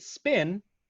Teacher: But in the phonetic form, the square brackets, the P in spin does not have a puff of air. The puff of air, by the way, in pin is represented by a small little H up next to the P, to the right of the P. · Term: aspiration